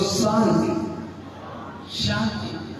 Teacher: मूर्धन यानी मुंह के अंदर सीटी निकली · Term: मूर्धन सा